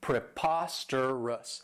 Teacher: And this adjective has 4 syllables, and the stress is on that second syllable